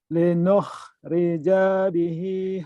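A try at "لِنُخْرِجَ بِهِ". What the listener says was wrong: Kenapa panjang janya? Kenapa janya panjang? Linukhrija bihi. Pendek, ada pemanjang.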